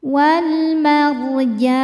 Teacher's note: Cara bacanya lam dibaca izhar atau jelas. Wal mar ro sukun dibaca secara tafkhim karena sebelumnya berharakat fathah. Cara bacanya ditebalkan.